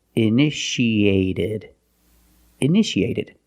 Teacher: The second T is between vowels, so we pronounce it like a fast D.